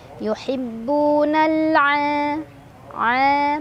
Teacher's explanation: mad tabi'i karena ada alif sebelumnya fathah, dibaca panjang dua harokat.